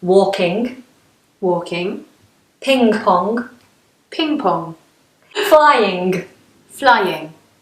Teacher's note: when we have an ING ending for example walking singing but northerners will release that plosive G at the end so they'll release the pressure at the back of the tongue and let the sound go